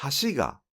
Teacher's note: In “hashi ga” meaning “bridge,” the pitch does not drop within “hashi,” but it drops on the following particle “ga.”